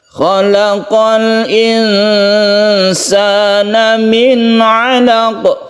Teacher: Insan, khalaqal al-insan ini adalah al-qamariyah atau izhar qamariyah. Kemudian nun bertemu dengan sin adalah ikhfa hakiki, kita panjangkan, kita samarkan ini. Kemudian nun bertemu dengan ain ini adalah izhar.